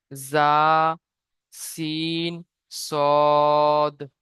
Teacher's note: জীবের আগা সামনে এবং সামনের উপরে এবং নিচের দাঁতের আগার সাথে লাগিয়ে উচ্চারিত হয়